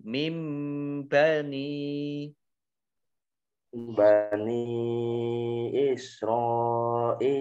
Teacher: nun sukun ketemu ba iqlab. Ada mim kecil, dibaca mim.